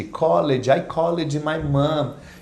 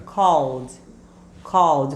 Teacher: A pronúncia correta você vai escrever o ed, mas na pronúncia ele vai ficar com som de D. Mas é um Dzinho bem murcho, Bem ó, levinho.